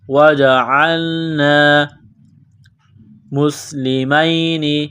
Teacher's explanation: سین میں سیٹی کی آواز پیدا کرنی ہے، سین کو باریک کرنا ہے